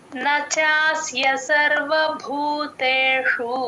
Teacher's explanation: సర్వ భూతేషు లో భూ కి మహాప్రాణం ఉంది